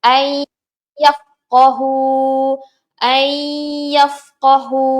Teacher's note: memasukkan huruf yang pertama, huruf nun ni, ke dalam huruf yang kedua, iaitu huruf idgham, huruf ya. Okey, dan menjadikan kedua-duanya satu huruf yang bersabdu. Seolah-olah kita baca ayyafqahu.